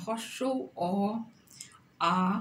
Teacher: পশ্চাৎভাগ স্বরধ্বনি বলতে কি বোঝেন? হ্রস্ব অ, আ উচ্চারণে জিহ্বা পশ্চাৎভাগের দিকে আকৃষ্ট হয় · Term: পশ্চাৎভাগস্থ স্বরধ্বনি